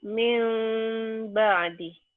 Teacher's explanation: Ya, bunyi M. Tapi ada bindeng sedikit. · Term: iklab